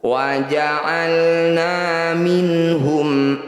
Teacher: Wa ja'alna minhum, nun sukun bertemu hak disebut bacaan izhar halqi. Bunyi nun sukunnya baca dengan jelas tanpa dengung.